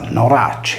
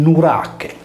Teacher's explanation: con la pronuncia della palatale /ce/ in velare /che/, deve risolversi in Nurache.